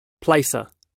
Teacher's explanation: in Australian and New Zealand Englishes, we can represent how the first vowel in the word placer can be represented as more open a diphthong compared with British English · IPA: /ˈplæesə/